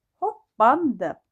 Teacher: Qoşa Plarda isə birinci P olduğu kimi qalır. İkinci P isə B ilə, yəni özünün cingiltli qarşı ilə əvəz olunacaq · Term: cingiltili qarşılığı